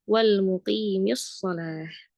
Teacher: Kalau di sini alif lam lam sukun bertemu shad asyamsiyah maka ya sudah lamnya tidak dibaca langsung lagi ke shad.